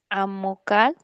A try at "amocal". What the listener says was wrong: Pronuncia fuerte en la de en medio, no al final. En vez de decir amocal, di amocal. Eso, no había palabras que tuvieran su sílaba tónica o se pronunciaran fuerte al final.